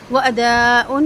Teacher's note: مد واجب متصل ہے، 4 حرکت مد کو لمبا کریں گے